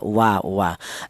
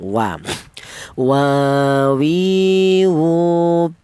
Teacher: Akan tetapi kedua bibir ini tidak rapat ya renggang. Jadi huruf wawu itu keluarnya huruf berasal dari kedua bibir yang renggang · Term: huruf wau